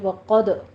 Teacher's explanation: قوف کو پر پڑھتے ہوئے دال کے اوپر قلقلہ کیجیے ، وقد اخرج اخرج نہیں کہنا، اخ یہ خا پر پڑھتے